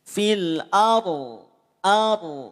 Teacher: Kok bisa bunyinya tebal karena tadi pangkal lidahnya diangkat